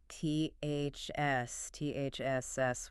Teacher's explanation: You stick your tongue out between your teeth for that unvoiced th and then you pull it back really sharply to hiss the s.